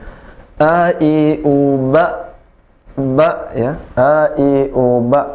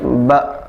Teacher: a hamzah sifatnya salah satunya adalah suaranya tertahan ya. Jadi suaranya tertahan atau dalam bahasa kita sebutkan syiddah. Maka tidak bisa di suara yang mengalir, ba, nggak bisa ya.